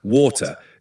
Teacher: the T in water often becoming a soft D sound in American English, water, compared to the clearer T in British English, water. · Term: flap T